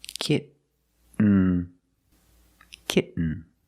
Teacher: You do the stop T, kit. You don't release, and then you fall to an N, kitten. When you make the stop T, the tongue is up, almost in the N position, so you don't have to change much.